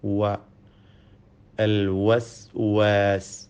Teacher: വാവിൻ്റെ മഖ്റജ്, ഉത്ഭവസ്ഥാനം 2 ചുണ്ടുകളാണ്. വാവ് ഉച്ചരിക്കുമ്പോൾ ചുണ്ടുകൾ വൃത്താകൃതിയിലാവുന്നു എന്നത് ശ്രദ്ധേയമാണ്. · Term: വാവിൻ്റെ ഉച്ചാരണം